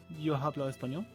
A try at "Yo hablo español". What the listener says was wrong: Why do you say the H in that? The H is silent.